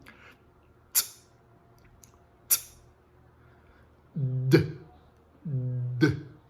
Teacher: Observem que para produzir esses sons, é necessário que a ponta da língua pressione os alvéolos, de maneira que a passagem de ar seja totalmente obstruída. Esse ar se acumula e na saída ocorre literalmente uma explosão. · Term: oclusivas T e D